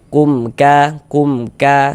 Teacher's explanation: Maka dibaca jelas, tidak berdengung. Maka dibaca pendek saja. Mim sukunnya kita baca jelas. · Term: izhar syafawi